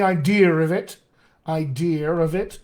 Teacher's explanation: we may be dealing with an intrusive r to use to link words together british accents often do this